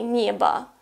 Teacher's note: O in an unstressed position is pronounced as A, that's why we say небо, even though it's written небо.